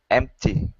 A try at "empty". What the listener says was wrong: There you go. Good T sound.